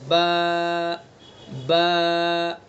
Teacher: तो बा का मखरज, दोनों होंठों की तरी का हिस्सा, ये बा का मखरज है। दोनों होंठों का जो तर वाला हिस्सा है वहाँ से बा को अदा करेंगे।